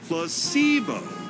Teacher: The stress is on the middle syllable.